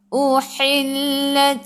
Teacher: Uhillat, tekan dalam lam ada sabdu. Uhillat, ta kena ada angin sedikit sahaja. Sifat hurufnya hamas. Sikit sahaja angin. · Mim bertemu dengan ba, ikhfa syafawi. Kena dengung 2 harakat.